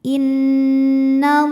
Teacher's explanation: Lam pada lafaz Allah atau lam jalalah dibunyikan secara tafkhim. Sebab huruf sebelumnya berbaris fathah maka dibacanya tebal.